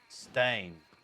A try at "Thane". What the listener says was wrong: Well, not Stein, I said Thane. TH.